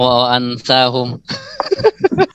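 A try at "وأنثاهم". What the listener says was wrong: Kok ansa? Perempuan itu unsa, bahasa Arabnya, bukan ansa. Ansa itu saudaranya angsa. Unsa kalau perempuannya.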